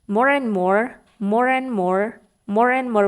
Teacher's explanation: and huruf d-nya itu tidak dibaca atau silent atau di dihilangkan aja gitu